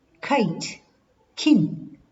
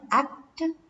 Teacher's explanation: For example, k in act. So when we say kite, kin, k is fully pronounced, but act, k is not fully pronounced